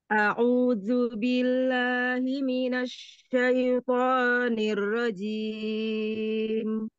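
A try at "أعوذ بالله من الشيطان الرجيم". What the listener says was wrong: Pada za, kemudian pada shin. Minasya, jangan di seperti berhenti ya.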